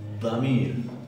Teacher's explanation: se pronuncia como una letra D más dura. La lengua se empuja no solamente contra el alvéolo, sino también un poco contra el paladar, hacia arriba, como si no tuviera algo pegajoso en la boca. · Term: dad